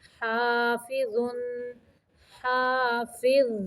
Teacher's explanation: ظا کو ساکن کرتے ہوئے زبان کی نوک کو اوپر والے سامنے کے دو دانتوں کے سرے سے لگانا ہے. حافظ، آواز کو موٹا رکھنا ہے.